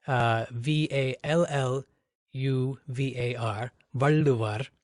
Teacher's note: The L is actually formed by bringing the tongue to the roof of the mouth, so it's what the linguists call a retroflex L.